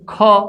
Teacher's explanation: ખ વ્યંજનને ઉચ્ચારીએ છીએ ત્યારે પણ આપણી નાદતંત્રીમાં થતું કંપન ઓછું છે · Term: અઘોષ વ્યંજન